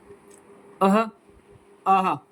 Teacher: विसर्गों का उच्चारण होगा अ आहा ह की आवाज आएगी